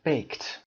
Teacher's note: وقتی که شما unvoiced sound داشته باشید مثل صداهای ف یا ک یا پ یا چ یا ش و یا س، اینا صدایی هستن که unvoiced یعنی صدا نداری شما vibration توی گلو ندارید. اینها وقتی که دی یا ایدی میگیرن صدای ت ایجاد میکنن.